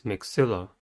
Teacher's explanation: Maxilla has 3 syllables and the stress is at the second one